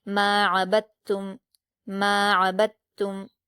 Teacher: ولا انا عابد ما، میم پر الف مدہ ہے، 2 حرکات کھینچیں گے، عین پر حرکت جلد پڑھیں گے، با پر حرکت ہے، دال سے ملا کر پڑھیں گے، اس کے بعد تا پر تشدید ہے تو پیچھے والی حرکت سے ملایا جاتا ہے اس لیے ہم با کی حرکت سے ملائیں گے۔ عبد، تا پر پیش کی حرکت ہے، میم سے ملا دیں گے۔